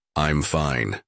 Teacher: said with a falling intonation and calm tone